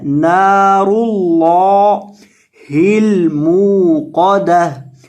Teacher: रॉ को भी और लफ्ज़ अल्लाह के लाम को भी दोनों को आपने मोटा करना है